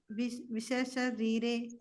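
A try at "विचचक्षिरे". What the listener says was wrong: சீரே. அது சஷீரே போடுறது சக்ஷீரே.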